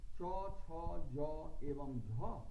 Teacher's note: तो ये सारे तालव्य वर्ण कहलाते हैं। तालव्य वर्ण अर्थात तालु से उच्चारित होने वाले वर्ण, अर्थात इन वर्णों के उच्चारण के समय हमारी जीभ तालु को स्पर्श करती है। हो सकता है आपको एक बात में कंफ्यूजन हो, आपको शंका हो कि तालु हम किसे कहते हैं, तो आप अपने मुख के अंदर जीभ को ऊपर ले जाइए और ऊपर जाकर जीभ जिस स्तर को स्पर्श करती है, जिस स्तर को छूती है, वही तालु है।